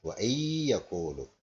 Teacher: nun mati bertemu ya. Ini idgham bi gunnah.